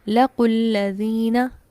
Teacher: ठीक है, तो एक ये साकिन और एक लाम का साकिन, दो साकिन इकट्ठे आ गए, पहला साकिन हरफ मद्दा का था तो इस हरफ मद्दा को ही ड्रॉप कर दिया गया।